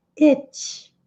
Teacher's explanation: Aquele I que é um som intermediário entre o I e o E